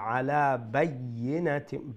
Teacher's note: ইয়ার উপরে সাদ্দা, double letter double sound, তো দুইটা ইয়া উচ্চারণ যাতে হয় একটু শক্ত হয়ে ইয়া উচ্চারণ করবা